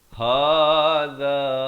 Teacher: ha dipangkal kerongkong, za di hujung lidah